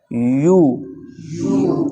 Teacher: या या पर जेर हो उसके बाद निकाली जाएगी य और या पर पेश हो तो होठ गोल करके आपने या पर पेश की आवाज निकालनी है